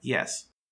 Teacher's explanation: palatal is only used in english for the y sound in words like yes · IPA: j